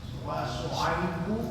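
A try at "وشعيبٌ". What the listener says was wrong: bun ada tanwinnya.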